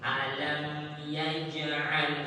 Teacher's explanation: A-nya jangan sampai E, jangan sampai O, tapi A terbuka A.